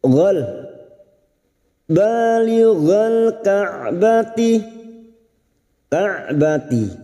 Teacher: ka'bati huruf ain tawassut dan jahar